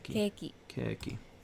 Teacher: Note that the vowel sound of ke is drawn out for keiki.